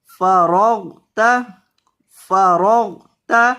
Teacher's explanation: را کو بھی اور غین کو بھی دونوں کو پر کریں فرغت فإذا فرغت فانصب فانصب یہاں نون کے اوپر گنہ ہوگا